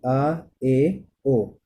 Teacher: जिन स्वरों के उच्चारण में मुख सबसे अधिक खुलता है उन्हें हम विव्रत स्वर कहते हैं